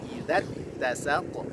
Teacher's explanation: Di huruf ta-nya ada tasydid, berikan nabrah, menekan suara.